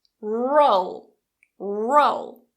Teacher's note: we don't release it, so I don't say rural-a. I keep the tongue up. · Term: Dark L